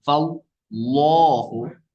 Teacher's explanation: اس کے لام سے پہلے زبر ہے، تو اس کو لام کو ہم کیا پڑھیں گے، پر پڑھیں گے، فاللہ. اچھا دوسرے لام کو پر پڑھنا ہے یہاں سب جگہ پہ.